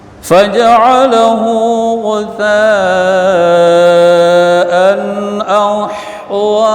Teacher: bacaan baris tanwin jumpa dengan hamzah hukumnya izhar, tidak dibaca dengung. Zahir bunyi tanwin.